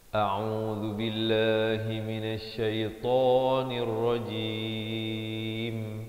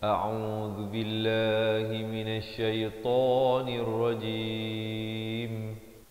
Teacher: Hamzah di pangkal kerongkong, ain di pertengahan dengan baris dhammah 2 harakat, zal baris dhammah di hujung lidah, lafzul jalalah dibaca nipis 2 harakat.